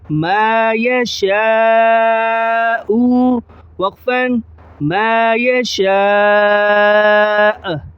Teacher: اور دوسرے نمبر پر جو بات ہے وہ ہے مد کی۔ مد یہ بڑا مد ہے، اسے 5 الف یعنی 5 سیکنڈ تک کھینچ کر رکھیں گے